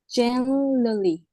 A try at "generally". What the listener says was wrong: Yeah, better.